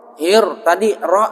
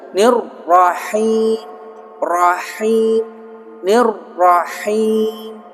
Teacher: Bismillahir, hir langsung ke ra. Hir tadi ra ada sifat takrir, bergetar.